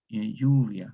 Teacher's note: Estos grupos iniciales, PL, KL, FL, pierden la consonante inicial y la L palataliza en elle